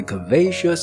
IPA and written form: kɝˋveʃəs (curvaceous)